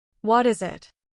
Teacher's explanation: the T in what links to the I in is, and the S in is links to the I in it